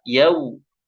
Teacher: Kalau huruf wau ya dimanyunin. Dimanyunin ya sempurna. Yau. Bukan yau, tapi yau. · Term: huruf lin